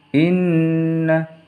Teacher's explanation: Inna, nunnya bertasdid harus dibaca dengung